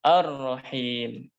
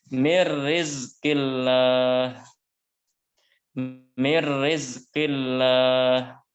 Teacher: Ya, Ar-Rahim itu pertemuan huruf lam dan ro. Ya, lam bertemu ro dan ro-nya ada tanda tasydid, maka lamnya dimasukkan ke huruf ro yang dibaca Ar-Rahim. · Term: idgham kamil